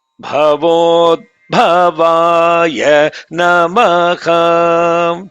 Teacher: There should be a pause because there is what is called half consonant.